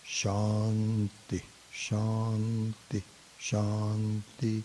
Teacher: the Shanti starts with high to low